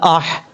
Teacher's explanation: حمزہ کے بعد جو ہا ہے یہ ہا بریک ہے، اس کو بریک پڑھنا ہے کیونکہ جس حلق سے اس کا تعلق ہے وہ حلق جو ہے اس کا تعلق گلے کے ساتھ ہے جہاں سے یہ ہا ادا ہوتا ہے، اس لیے اس کو بریک پڑھیں گے، اس طریقے سے۔